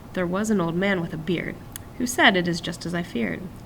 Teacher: two unstressed syllables plus one stressed one